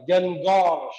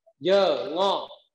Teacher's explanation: chúng ta phải đọc là dơ, tách thành hai âm tiết